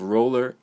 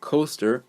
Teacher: the second syllable of roller and the second syllable of coaster the schwa sound is used